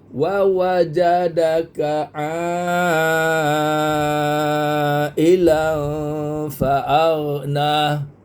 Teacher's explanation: [Muzik] Ilan faagna wawajadaka sama dengan ini semua satu harakat wawajadaka ailan faagna a ini enam lima harakat mad wajib sebab apa ain alif atas a mad asli bertemu dengan hamzah dalam satu kalimah Jadilah dia mad wajib yang perlu kita baca lima harakat